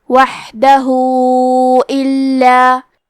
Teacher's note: یہ مد صلہ کبریٰ ہے، مطلب ہم اپنی آواز 4 مد کے برابر لمبی کریں گے، وحدہ الا۔ کلمت الا میں لام پہ تشدید ہے تو ہمیں 2 حرف کے برابر لام کو پڑھنا ہے۔